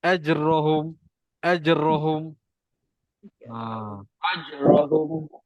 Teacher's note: Suara tertahan, nafas tertahan. Dan bunyi dia melantun. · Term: huruf melantun